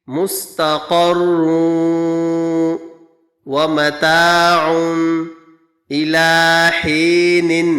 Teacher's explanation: یہاں گننا کریں گے، 2 پیش کی تنوین کے بعد واو آ رہا ہے اور واو ادغام یرملون میں سے ہیں۔